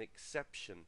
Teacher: the stress there exception is on the second syllable